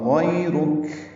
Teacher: غیرک را پر پڑھیں گے اور کاف باریک پڑھیں گے اور کاف پہ ہمس ہوگا